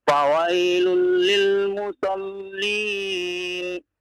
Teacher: musallin, tasydid, tidak dipanjangkan ya Pak ya